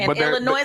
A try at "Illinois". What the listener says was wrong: No S. There's an S, but you don't pronounce it.